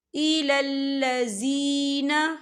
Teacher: وَمَا لَهُم مِّن نَاصِرِينَ أَلَمْ تَرَ إِلَى الَّذِينَ، یہاں دیکھیں إِلَى الَّذِي، یہاں پہ یا مدہ ہو رہا ہے، یا ساکن سے پہلے زیر ہے، تو ہم اسے 2 یا 3 حرکت کے برابر کھینچے پڑھیں گے